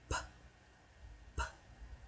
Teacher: I join my lips. Bilabial.